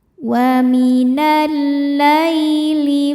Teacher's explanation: Lai hukumnya huruf lin sebab ya sukun sebelumnya baris fathah. Dibacanya lembut atau lunak